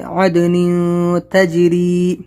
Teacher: یہاں پر تنوین کے بعد تا اخفا لیٹر ہے، اخفا کریں گے